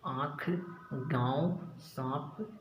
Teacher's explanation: अनुनासिक नाक और मुंह दोनों से बोले जाते हैं। अनुनासिक जो होते हैं जिनमें चंद्र बिंदी होती है, वो नाक और मुंह दोनों से बोले जाते हैं।